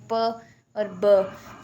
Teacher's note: The lips can close together stopping the air, air को stop करते हैं। देखिए अगर आप साउंड बनाएं प और ब, this action create sounds which are called stop और प्लेसिव।